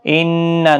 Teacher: نون مشدد پر غنہ ہوگا